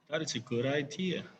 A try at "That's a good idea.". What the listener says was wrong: So sometimes your intonation matters. This is typical Indonesian intonations. So it really sounds different when you say that's a good idea. Okay, instead of that's a good idea, that's totally different.